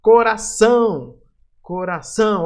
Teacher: o são, a sílaba mais forte, até acentuada. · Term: oxítona